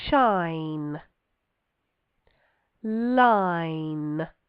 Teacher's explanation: I'm pressing my tongue quite firmly for that L as well.